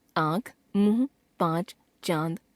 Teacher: अनुनासिक अनुस्वार से मिलती जुलती एक और ध्वनि है जिसे अनुनासिक कहते हैं। इसका उच्चारण करते समय मुख से निकलने वाली हवा नाक और मुख दोनों से निकलती है।